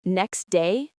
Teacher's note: The T sound vanishes. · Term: dropping sounds